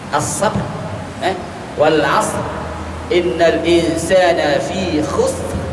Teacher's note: Dia ada getaran. Sifat ra itu tetap ada. Takrir itu tetap berlaku. Jangan kita hilangkan terus.